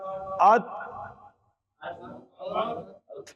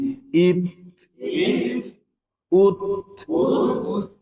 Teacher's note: یہ تھوڑی سی جو سانس نکلی ہے یہ صفت حمزہ ہے